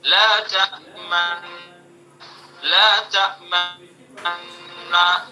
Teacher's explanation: پہلے نون کا دوسرے نون میں ادغام کیا لیکن ادغام مال اشمام، تاکہ پیش کا بھی کچھ اثر باقی رہے